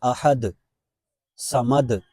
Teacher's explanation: یہاں ہر آیت کے آخر میں دال کا لفظ ہے، دال میں قلقلہ ہوتا ہے، یعنی اس کو واضح کرنا ہے، جیسے احد، صمد، اگر ایسے پڑھیں گے احد، صمد، اس طرح یہ تلفظ درست نہیں ہوگا۔